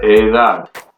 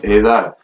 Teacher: So that means age, and since it ends in a consonant, the letter D, the syllable that's going to be stressed is the A, the last A there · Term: last syllable